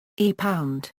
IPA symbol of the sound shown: ɣ